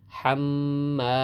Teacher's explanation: মিমের কারণে আমরা এখানে তাসদিদ দেওয়ার কারণে এখানে আমরা ওয়াজিব গুন্না করব।